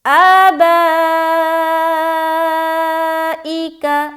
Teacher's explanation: با میں ہم کھینچ رہے 3 سے 4 الف